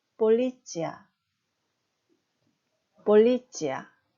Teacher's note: 이 반모음 요트는 앞에 나와 있는 자음 츠를 부드럽게 연음으로 바뀝니다. 그래서 폴리츠가 아닌 치 발음이 됩니다.